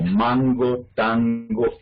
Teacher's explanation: Que en español sí tenemos la N velar, que se llama, que iría aquí en esta parte.